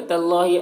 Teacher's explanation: اللہ کے لام کو پر پڑھیں گے، کھڑا زبر ہے، ایک الف کے برابر کھینچیں گے۔